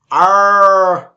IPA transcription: ɜ: